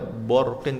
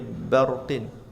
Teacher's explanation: hindarilah membaca tafhim pada huruf ba